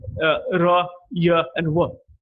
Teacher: the active articulator hardly touches the passive articulator, and it released. So we get sounds like r, y, and w. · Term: approximants